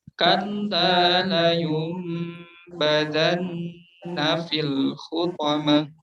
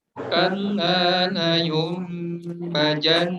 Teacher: makhraj huruf za-nya membacanya terdengar seperti huruf ja